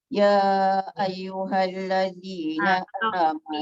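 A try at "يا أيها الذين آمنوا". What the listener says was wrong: Ya kena panjang lah.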